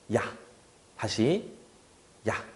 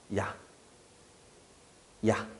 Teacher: 입모양만 갖고 있다가 아라는 소리가 나면서 소리가 미끄러지듯이 연결되는 게 순간적으로 야 소리가 나는 거예요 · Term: 이중모음